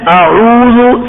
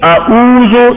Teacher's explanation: عین کو حمزہ کی مخرج میں ادا کرنا یہ غلطی ہے.